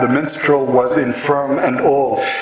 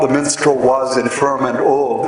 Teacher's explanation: The was is not stressed.